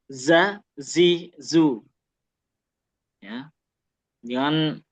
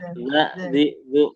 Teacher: zai ini tadi harus kita keluarkan desis-nya dalam arti jelas